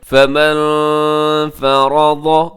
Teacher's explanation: فمن فرض، یہاں نون ساکن ہے، فمن میں نون ساکن کے بعد کیا ہے دی فا ہے جو کہ حروف اخفا میں شامل ہے، اب یہاں اخفا کیجیے گا۔ فمن فرض، را موٹا ہے، حرف ضاد وہ بھی آپ نے موٹا پڑھنا ہے